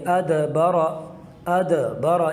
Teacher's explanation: تو یوں قلقلہ کر کے پڑھیں گے ادبرا، ادبرا، یہ جو اد کی آواز آ رہی ہے یہی وہ قلقلہ ہے، یہی وہ جنبش اور حرکت ہے